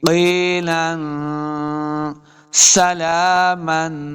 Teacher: سین پہ سیٹی کی آواز آئے گی